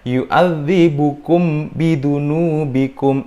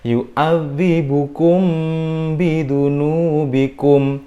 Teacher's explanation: Dia kurang ikhfa syafawi ya. Jadi harus dibaca dengung dan samar.